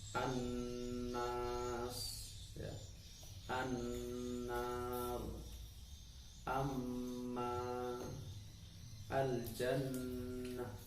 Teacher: Bacaannya adalah berdengung Gunnah itu artinya dengung. Setiap nun dan mim kok diberi tasdid, maka itu bacaannya disebut gunnah, bacaannya dengung. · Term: bacaan ghunnah